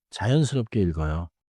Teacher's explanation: 읽어요에서는 리을 소리가 앞 음절에 남고, 기역 소리가 다음 음절로 이어져요.